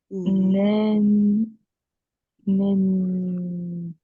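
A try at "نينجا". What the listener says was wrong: Juste au début, c'est ni. Ouais, ninja.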